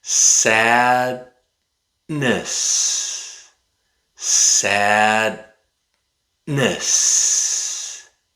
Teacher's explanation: Now, let's try saying that word again, but let's replace the letter D with a glottal stop. Stop the air in your throat after the letter A.